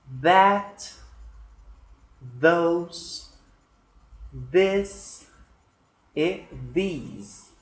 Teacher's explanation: há uma fricção, há uma expulsão de ar e há um barulho também · Essa é a minha boca, essa é a minha língua, os meus dentes. Eu vou encostar a língua nos dentes da dentária superior.